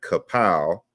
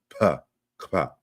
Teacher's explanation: So this isn't like kapow. There's no vowel in between the K and the P. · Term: simultaneously articulated double consonant